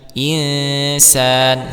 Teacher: nun sukun bertemu dengan huruf Sin dibaca ikhfa ya dibaca samar